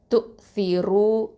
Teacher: இந்த ரா தொம்மா வந்து ஹெவியாக தான் சொல்லணும், தஃப்ஹீமாக சொல்லணும்.